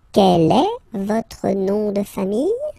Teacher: just raise a little bit your voice at the end of the question